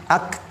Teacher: Perhatikan juga huruf kafnya harus ada hamas. Ak. Dan jangan berlebihan.